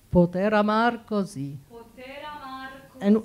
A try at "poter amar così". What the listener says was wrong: the R of amar, you don't have to flip it too much, huh? A little, sounds a bit Scottish.